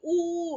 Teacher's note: कहां से आवाज आ रही है? जीभ के पिछले भाग से आ रही है। पश्च मतलब पिछला भाग, तो पिछले भाग से आ रही है।